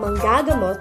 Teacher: iba ang manggagamot na ang diin ay nasa unahang ga dahil ito ay pandiwa. Ang ibig sabihin nito, siya ay gagamot ng pasyente.